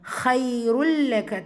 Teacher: ஆஹிரத்து ரா ஃபத்ஹா பேச்சு வந்திருக்கு, வல்லினமாக ஓதணும். கைருல் லக தன்வீனுக்கு அப்புறமா லாம் இதுதான் பிலா குன்னா இணைக்கணும், ஆனால் குன்னா செய்யக்கூடாது